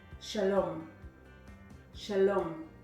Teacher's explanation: what syllable is emphasized if you guessed the last syllable you are correct